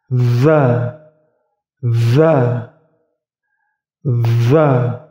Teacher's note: Sedikit menggigit ujung lidah. Atau ujung lidah kalian berada di ujung gigi seri atas.